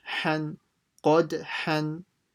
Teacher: make sure you pronounce a ha from the middle of the throat